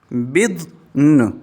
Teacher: जब स्टॉप करेंगे तो दौद पे, अब यहाँ दौद पे साकिन और नून पे हरकत ज़बर। जब स्टॉप करेंगे, वक़फ़ करेंगे तो दौद भी साकिन और नून भी साकिन, दोनों साकिन हो जाएंगे।